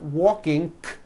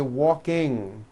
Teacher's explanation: And I want you to realize that there is not a K sound. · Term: ng ending